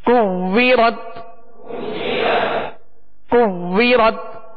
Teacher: واو میں ہونٹ گول کریں گے اور یہ واو مشدد ہے لہذا جمعوں کے ساتھ پڑھیں.